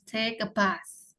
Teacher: Bath-nya, TH-nya ada hembusan nafasnya.